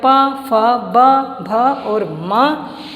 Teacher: ये सारे इनको बोलते समय हमारे होठ आपस में स्पर्श करते हैं, इसलिए इनको ओष्ठ उच्चारण स्थान दिया गया, इनको ओष्ठ वर्ण कहते हैं।